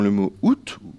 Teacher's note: le T est toujours prononcé en français mauricien